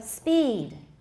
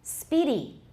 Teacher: the vowel in speed is longer than the first vowel in speedy